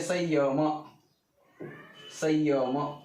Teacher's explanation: संयम या अनुसारचा उच्चार य सारखा होतो.